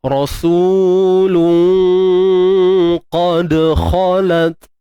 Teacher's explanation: huruf dal yang bertanda sukun. Di sini tuan-puan, kita sebut qalqalah sughra. Lantunan yang paling kecil ataupun lemah, dan praktikal dia kita lalu je.